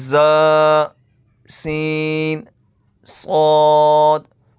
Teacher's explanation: ان 3 حروف یعنی زا، سین، صاد کو ادا کرتے وقت سیٹی کی طرح تیز آواز نکلتی ہے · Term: حروف صفیریہ